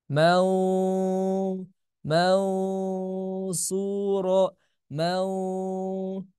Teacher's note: Gimana caranya supaya tebal maka si pangkal lidah kita dinaikkan ma ma ma perhatikan bedanya pertama tipis kedua tebal jadi serasa